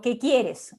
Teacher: Ese qué siempre va a tener el acento primario, ¿no? En el caso de estos pronombres interrogativos.